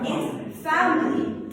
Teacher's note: I in family will be unstressed and it will be pronounced as so it will be family.